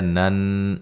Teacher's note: نن نون مشدد پہ غنہ ضروری ہے